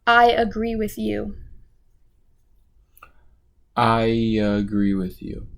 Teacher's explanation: he put the y sound in front of the agree